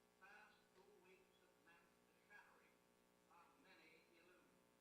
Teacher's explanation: he does not produce the flapped intervocalic T.